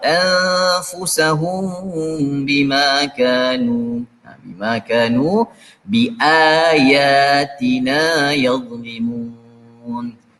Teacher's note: Kemudian kita nampak ada mim mati berjumpa dengan huruf ba, ikhfa syafawi. · Kemudian kita nampak ada ikhfa syafawi lagi, dibaca dengan samar-samar, anfusahum bima kanu, bima kanu bi ayatina yadhlimun.